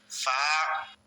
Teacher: গইন, ফা, এক আলিফ পরিমাণ লম্বা হবে, উপরের দাঁতের আঘাত নিচের ঠোঁটের পেটে লাগবে।